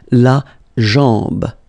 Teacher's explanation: A-M, when you combine these two, basically it's just like A-N, so it's nasal and it's en.